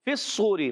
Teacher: صاد و پہ سو، واو مدہ بھی ہے، کل کھینچنا ہے، را کے نیچے زیر آنے کی جگہ را باریک ہو جائے گا · کرتے ہیں۔ فی الصوری، فا کو صاد سے ملانا ہے، اور صاد موٹے حروف میں سے، ایکسٹرا موٹے حروف میں سے بھی ہے، حروف مطبقہ میں سے